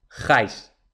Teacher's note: Es una vocal abierta seguida de una vocal cerrada, entonces es diptongo.